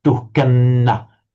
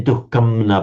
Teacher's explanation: the anuswara is pronounced exactly like the following n, as if it's a double n. Duhkanna. You wouldn't say duhkamna, but duhkanna.